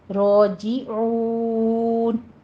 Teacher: عون میں عین ہے وسط حلق سے ادا کرتے ہوئے